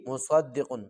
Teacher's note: صاد کو موٹا کریں گے اور قاف کو صحیح طریقے سے موٹا کر کے پڑھیں گے